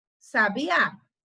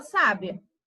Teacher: quando nós temos o acento aí na última sílaba então vai ser um sabiá e na penúltima sílaba a gente vai saber que é uma pessoa sábia